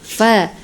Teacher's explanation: fa itu kan gigi atas itu hampir ee gigi atas bertemu dengan ee bibir bawah ya fa gitu sedikit ya ujung gigi seri atas bertemu dengan bibir bawah